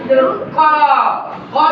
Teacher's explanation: ক, ক বলার সময় দেখবা ক এর সাথে একটু কল্পনা করে দেখো, ক বলার সময় মনে হচ্ছে ক এর সাথে স্বরে অ যুক্ত আছে।